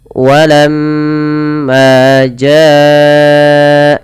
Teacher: mim berharakat tasdid ini kita namakan dengan bacaan gunah dan ia harus ditahan teman-teman harus ditahan suaranya sepanjang dua harakat